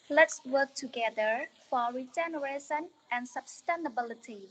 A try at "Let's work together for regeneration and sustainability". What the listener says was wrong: Compared to this part, please speak more slowly, changing a little bit tone, color of your pronunciation.